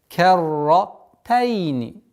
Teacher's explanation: ра здесь удвоенная и твердая